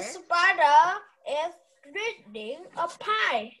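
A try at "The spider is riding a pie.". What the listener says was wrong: Riding. It's not reading. Riding.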